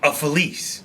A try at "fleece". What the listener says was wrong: No, you're saying a felice. It's a fleece.